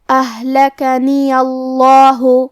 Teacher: آخری میں یا پہ بھی زبر ہے لہذا ہم زبر کو ظاہر کریں گے اور لفظ الجلالہ مطلب کلمت اللہ کے لام کو بھی موٹی آواز میں پڑھیں گے · کلمت اہلکنیہ میں یہاں ہا ساکن ہے تو ہم ہا کو ظاہر کریں گے. ہا کی ادائیگی حلق کے نیچے والے حصے سے ہے